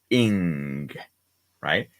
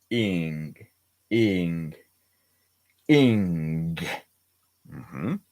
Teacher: So the ING sound for Iptahal, the ING sound is your tongue, the tip of your tongue is down and then the back of your tongue rises like this. So it sort of hits the top of your mouth and then the ga, is like a pull from your tongue down, ING, tip down, back up, ING, ING, ING, that's how we pronounce the ING sound.